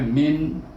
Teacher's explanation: Min ini kita baca min, jangan dengung-dengung, jangan panjang, satu harakah saja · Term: izhar halqi